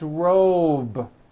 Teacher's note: it's not rope with an unvoiced P it's robe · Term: voiced B ending